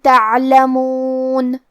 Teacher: کلمت تعلمون میں حرف العین کو ہم حلق کے درمیان والے حصے سے پڑھیں گے